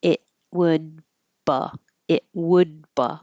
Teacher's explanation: I'm not going to release the D because there's a consonant after it · It, no T, because there's a consonant after it, so you hold it. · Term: stop T